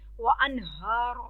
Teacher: अन पे इजहार करेंगे, आगे हरूफ हल्की. हा, हा पे कड़ी ज़बर है, अलिफ तक लंबा हो.